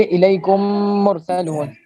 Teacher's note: اگر اس کے بعد بھی میم ہے تو وہاں ادغام ہوگا، یعنی دونوں میمیں ایک ہو جائیں گی، اور مثل ایک میم مشدد کے اس میں گنہ ہوگا